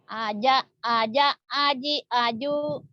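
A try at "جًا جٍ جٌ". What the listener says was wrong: Kan dua barisnya. Kok aja sih? Kok aja nggak ada engnya?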